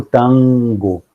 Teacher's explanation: entre a vogal an e o g, aparece um elemento nasal ali, né? E esse nasal tem a mesma configuração de ponto da consoante que vem depois. Então, ela seria como se, em tango, ela seria parecido com aquele do sing, do inglês, né?